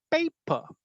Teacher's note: So the first syllable is stressed, second is unstressed. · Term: trochaic